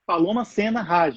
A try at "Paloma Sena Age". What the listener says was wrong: É Paloma Sena age, não fala rage, não, é age.